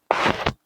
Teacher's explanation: maka mim akan dibaca dengan silah, dengan baris di hadapan